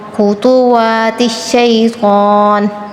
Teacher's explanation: خا اور طا تفخیم کریں گے